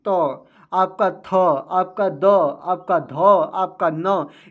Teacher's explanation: त आपका थ आपका द आपका ध आपका न ये सभी उच्चारण करने में जो आपकी जीवा है वह दंत पर रगड़ करेगी या दंत पर लगाने से इसका उच्चारण हो रहा है